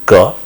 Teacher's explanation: Ka, where the constriction is at the velum